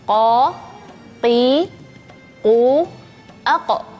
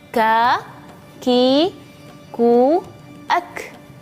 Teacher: Jadi kalau huruf qaf itu tidak ada anginnya. Kalau huruf kaf itu ada anginnya.